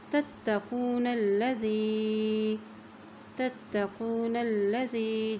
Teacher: لام کے اوپر شد ہے تو یہ نون کو ہم لام کے ساتھ ملاتے ہوئے پڑھیں گے